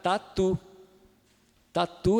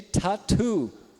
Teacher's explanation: t e vai fazer o t aveolar e não dental então para ele falar corretamente português ele tem que fazer o t dental e tirar aspiração